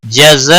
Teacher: جزاء مد متصل ہے 5 الف کے برابر کھینچ کر پڑھیں گے